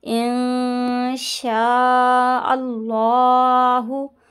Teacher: نون ساکن کے بعد شین آ رہا ہے، گنہ کریں گے